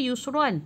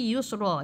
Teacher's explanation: Kalau baca yusran, tapi bila berhenti yusra. Yang ini bacaan waqaf fathatain.